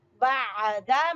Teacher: आइन को गले से निकालेंगे